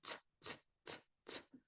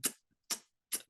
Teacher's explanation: So the regular is t, t, t, t, with the glottalized being t, t, t, kind of like a forced puff of air. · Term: glottalized C